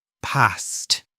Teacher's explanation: in many North American accents and parts of the UK, people use the short A sound.